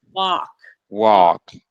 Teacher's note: drop the jaw no rounding